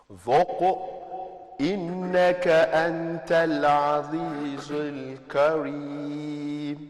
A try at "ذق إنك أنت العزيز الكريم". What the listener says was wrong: Don't stick your tongue out in the zai. Azizul kareem. And by the way, now you master the recitation, so you don't say dhuq and you stop there. No, don't pause.